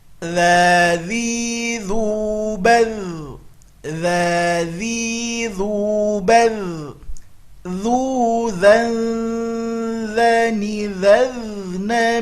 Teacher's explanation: Huruf dza harus keluar ujung lidahnya, kalau tidak dia akan berubah menjadi za.